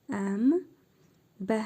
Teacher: Burada yenə məddi muttasıl qaydası gəlib. Dörd əlif miqdarı uzadırıq bə hərfini. Əmbə i mim hərfində hərfi məd var. · İqlab qaydasına görə nun hərfini mim hərfi kimi tələffüz edirik.